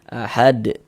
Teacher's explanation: karena huruf dal ini sukun maka berarti dia mantul ahad. Karena termasuk salah satu daripada 5 huruf qalqalah. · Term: qalqalah kubra